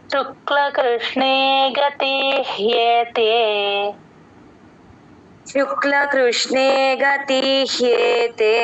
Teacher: గతి తి కి హ ని జాయిన్ చేసి చెప్పాలి ఇక్కడ అ కింద యవత్తు క్లియర్ గా వినిపిస్తుంది అప్పుడు గతి హియేతే అలా